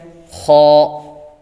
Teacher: خ، ان کو موٹا کر کے پڑھنا ہوتا ہے، جس طرح کہ پہلا حروف ہے خ، ان کو موٹا کرنا، جتنا ہو سکے ان کو موٹا کرنا ہے۔ خ حلقے اوپر والے حصے سے ادا ہوتا ہے